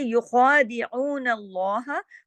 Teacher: ख़ा के ऊपर खड़ी ज़बर है और ख़ा मोटा भी पढ़ा जाएगा